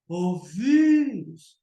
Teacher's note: O vírus. Então, mais forte o vi. Termina em us, ele recebe acento.